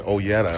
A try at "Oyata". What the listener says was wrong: No E. No E. Oyata.